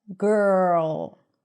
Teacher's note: So you anticipate the R. The R comes in really quickly after the first consonant. Girl. So it feels like there is no vowel sound here.